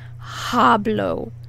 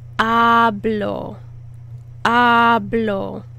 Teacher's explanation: So you don't want to say the H really hard. You actually don't want to say the H at all. It's silent.